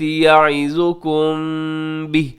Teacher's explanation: من الکتاب والحکمت یعظکم بہ، یعظکم، یہاں میم ساکن ہے آخر میں اور میم ساکن کے بعد با ہے، تو یہاں پہ اخفاء شفی ہوگا، آواز کو ناک میں ٹھہرائیے گا یہاں پہ